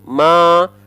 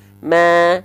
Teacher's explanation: Bedakan antara tanpa senyum ma dengan senyum ma. Lebih tipis yang dengan senyum. Senyumnya nggak usah berlebihan, senyum tipis-tipis aja, biar kerasa tipisnya.